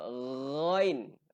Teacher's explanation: Kita punya pangkal lidah tu akan terangkat sebab dia nak keluarkan satu bunyi yang tebal. · Pangkal huruf ghain adalah hujung kerongkong. Okey. Jadi dia punya sebutan dia jelas.